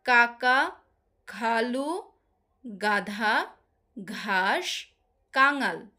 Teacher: যেসব ব্যঞ্জন ধ্বনি উচ্চারণের সময় জীভের পেছনের অংশ উঁচু হয়ে আলজীবের কাছাকাছি নরম তালুর কাছে বায়ুপথে বাধা সৃষ্টি করে তাকে কন্ঠ ব্যঞ্জন বলে।